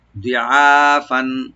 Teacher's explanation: দিয়ে একালিফ টানবো, দিআ যেন গলা মাঝখান থেকে আসে, দিআ ফান, ফান উপরে যে তানভিন আছে আমরা জাহার করবো, এখানে গুণা হবে না যেহেতু খা আসছে পরে